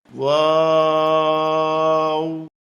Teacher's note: 2 ঠোঁট গোল করে শুরু হবে, 2 ঠোঁট গোল হয়ে শেষ হবে, মাঝে কিছু টাইম মুখ খুলে থাকবে, 4 আলিফ লম্বা হবে।